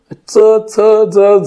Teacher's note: दाताच्या मुळाला आपल्या जिभेचं टोक लागतं